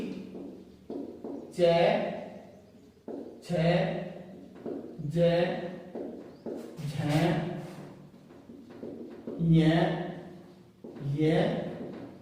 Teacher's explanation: जो तालु से बोले जाते हैं वो तालव्य वर्ण होते हैं।